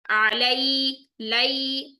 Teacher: आई की साउंड आती है या लीन में, या साकिन से पहले जबर आ गई, इसका मतलब है मोड़ कर अदा करेंगे नरमी से